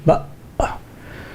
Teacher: the vocal cords come together and completely close the air passage. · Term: glottal stop